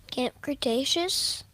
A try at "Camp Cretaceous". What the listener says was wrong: Why are you saying it like a question? You know what it is. Say it confidently.